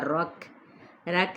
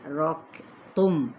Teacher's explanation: کاف پہ ہمس ہوگا، رک نہیں کہنا، رک تم۔